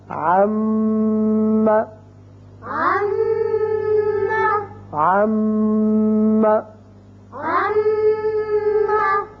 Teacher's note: اور غنے کی مقدار ہے حرکتان، یعنی دو حرکات کے برابر، جس کا مطلب ہے کہ ایک الف کے برابر. جتنا ایک الف کھینچتے ہیں اتنی دیر کے لیے آواز جو ہے ناک کے بانسے میں ٹھہرانے کا نام غنہ ہے